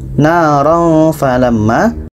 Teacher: Jadi kalau tanwin bertemu fa, fa ini tidak termasuk huruf yang 8, bermakna fa ini dengung. Naran falamma, tanwin bertemu fa, dengung.